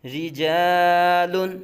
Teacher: را کے نیچے زیر را باریک پڑا جائے گا، لام باریک پڑا جائے گا